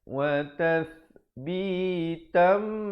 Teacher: di situ tanwin bertemu mim, dibacakan dengan dengung 2 harakat. Hukumnya idgham bi gunnah.